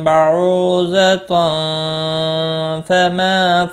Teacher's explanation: تنوین کے بعد حروف اخفا کا فا آیا ہے، اخفا حقیقی ہوگا، غنہ کے ساتھ پڑھیں گے